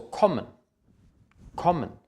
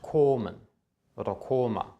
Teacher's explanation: Ein geschlossenes, kurzes O vor einem Doppelkonsonanten.